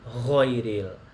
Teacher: Ghain ini kesalahannya adalah tidak ada alirannya, langsung kayak go gitu ya.